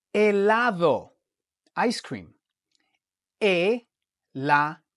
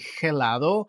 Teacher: the H in Spanish is always silent